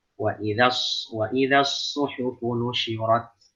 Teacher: Yang tebal hanya huruf shad saja.